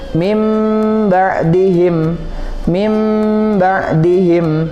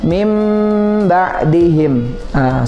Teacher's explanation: tidak lagi terdengar huruf nun tapi terdengar huruf mim huruf mim yang terdengar Selain itu cara membacanya kita baca dengung · Membalikan bunyi huruf nun menjadi huruf mim. Ya, nah biasanya ketika kita membaca Al-Quran ditandai di atas huruf ba-nya itu ada mim kecil. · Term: iqlab